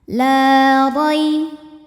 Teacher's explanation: Rai ada harfulin sebab ada ya sukun sebelumnya fathah. Cara membacanya cukup dilembutkan atau dilunakan saja.